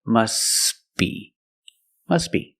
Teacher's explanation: But if you link the words, you pronounce it must be. The T is silent because it's between consonants. When you link the words, must be. Link the sounds s with a b. S, b. Together, must be.